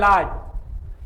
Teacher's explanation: आता है केवल ला इसके अंतर्गत जीभ तालू को छूती है जीभ तालू को छूती है और मुंह के दोनों बगल से हवा निकलती है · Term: पार्श्विक ध्वनि